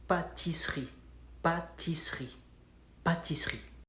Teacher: It's spelled like pâtisserie, pâtisserie. But in French, we skip the letter E and it goes like pâtisserie